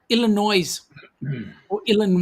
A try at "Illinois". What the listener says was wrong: No, Illinois. Illinois. No S. No S. Don't say the S.